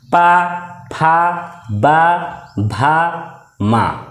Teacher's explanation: दोनों होंठ के स्पर्श से बोले जाने वर्ड ओस्ट वर्ड कहलाते हैं